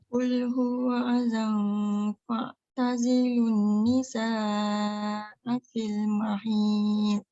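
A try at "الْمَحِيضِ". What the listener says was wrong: Dia masuk hidung lah jadi mahid. Jangan mahid. Mahi i. I u hi ha hi hu hi mahid. Dia masuk hidung sikit.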